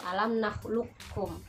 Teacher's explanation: Nah, memang huruf qaf itu adalah huruf yang qalqalah atau mantul, akan tetapi dalam ilmu tajwid yang menjelaskan tentang idgham mutaqarribain ini yaitu huruf qaf itu hilang gitu ya. Jadi diidghamkan menjadi huruf kaf